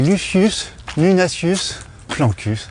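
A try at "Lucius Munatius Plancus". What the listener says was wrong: On prononce pas les S en latin.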